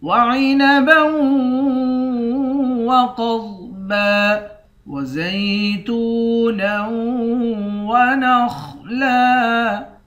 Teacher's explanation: دو زبر کی تنوین میں وقف کرتے وقت ایک زبر پڑھتے ہیں